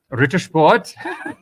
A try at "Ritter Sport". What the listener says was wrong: you know you're not saying the R right?